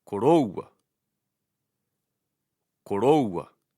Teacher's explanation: The stress is on the diphthong o, koroua, koroua.